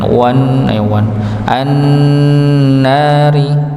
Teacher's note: Nun tasydid didengungkan, ditahan. Wan an-nari ya, maka dengungnya keluar dari hidung ya, ditahan. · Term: gunnah